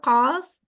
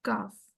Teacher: جیسے سمپل قاف کاف، قاف کاف، یہ دونوں ایک دوسرے کے بہت نزدیک ہیں، لیکن قاف تھوڑی ڈیپ ساؤنڈ ہے اور کاف ہلکی ساؤنڈ ہے